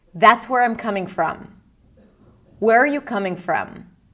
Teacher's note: except for the word where, I did not change the intonation. So, in fact, the intonation that we use for WH questions is the same intonation that we use for statements.